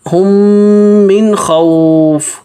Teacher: من خوف میں غنہ نہیں ہوگا کیونکہ نون ساکن کے بعد دیکھیں حروف حلقی آ رہا ہے